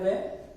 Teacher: दांत और ओष्ठ के माध्यम से समान रूप से उच्चारित ध्वनि होती है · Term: दंतोष्ठ